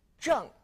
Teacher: now don't forget to pronounce the G on Jung it's Fourth tone as well